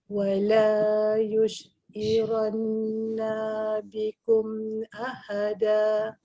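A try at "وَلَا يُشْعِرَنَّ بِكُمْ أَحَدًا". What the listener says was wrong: Okay, nun dia bagus, dia yang dengung. Tapi bila awak dengungkan nun dia tu, nun dia macam jadi terpanjang sikit awak baca na dia. Wala yush'iranna bikum. Jadi dia punya dia tu yang lama. Bila sebut na dia kena pendek.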